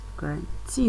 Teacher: the force or the stress is on the third syllable